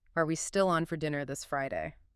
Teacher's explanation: it's the primary way we mark yes no questions in English. That rising pitch signals I expect a yes or no answer or I'm seeking confirmation.